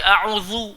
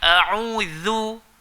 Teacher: Huruf zal rendahkan, jangan baca a'udzu, zu tebal. A'udzu. Yung panjang sikit.